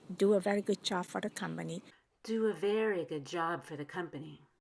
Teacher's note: So I stretch out do and very, even good and job. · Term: vowel lengthening